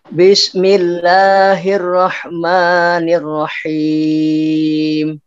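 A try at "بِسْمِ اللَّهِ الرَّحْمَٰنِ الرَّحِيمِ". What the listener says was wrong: Huruf sinnya sekarang yang terlalu cepat. Bismi.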